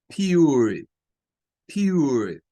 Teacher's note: La letra R no suena como tal, como solo la R, sino que suena con un schwa entre medio.